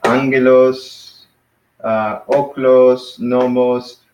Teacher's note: angelos, oklos, nomos, all these have the accent on the first syllable.